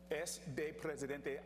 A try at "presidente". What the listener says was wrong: Again, he says presidente, which it will be presidente. You don't have to roll your R's every time. We have the ra sound, but we also have the ra sound.